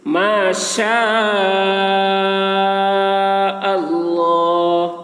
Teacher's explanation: اللہ کا لام پر ہوگا، موٹا کر کے پڑھیں گے، کیونکہ اللہ کا لام سے پہلے زبر ہے، حمزہ کے اوپر زبر ہے۔